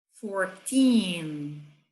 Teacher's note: do 13 ao 19, o teen é a parte mais forte na hora da pronúncia. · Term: sílaba tônica